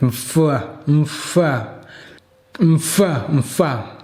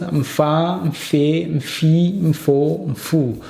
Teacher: M is m, ma, ma, fa, mf, mf, mf, mf. So the M is so silent, and then you go immediately to the F.